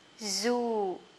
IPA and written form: zu: (zoo)